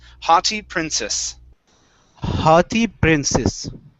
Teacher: Instead of haughty, it's haughty princess. Okay, so both the C and the double S are going to be unvoiced S's